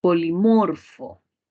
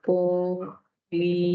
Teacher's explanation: Y la mayor fuerza de voz estaría acá en mor, y en mor, que sería una palabra grave.